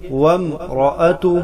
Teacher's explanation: وامرأتہ، وامرأتہ، بعض بچے یہاں پر وام پڑھتے ہیں تو خیال رہے یہاں حمزہ نہیں ہے، واو کو ڈائریکٹ میم سے ملائیں گے. وامرأتہ، را پر زبر ہے، اس کو پر کر کے پڑھیں گے